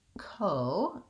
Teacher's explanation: In this word cooperate, we still have to do the diphthong O, but we don't hold it for that long because it's an unstressed syllable. Our stressed syllable is the op, that's where our length is.